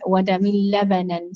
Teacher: we've got complete idgham without gunna between min and lam